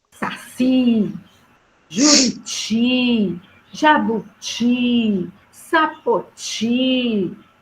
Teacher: todas essas palavras têm a última sílaba como a sílaba mais forte. Então, são palavras oxítonas.